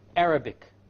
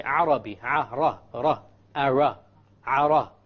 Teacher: The English R comes from the middle of the tongue, and the Arabic ra comes from the tip of the tongue. It is very important that when we pronounce the R in Arabic, the ra in Arabic, we do not roll the tongue.